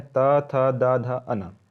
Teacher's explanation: दंत्य, दंत्य का उच्चारण स्थान दांत, अक्षर है त, थ, द, ध, अना।